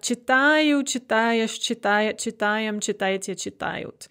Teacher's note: But when we add the endings, the stress stays on the а instead of moving on to the endings. · That stress is always there on the stem, on the а.